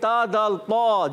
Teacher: मखरज है जबान का सिरा और ऊपर के दांतों की जड़ों से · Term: हुरूफ़े नित्रिया